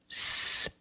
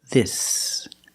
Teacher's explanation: The mouth is slightly open, I, and you make a short sound, I, this. And the S is a true S. There's no voice, there's no vibration.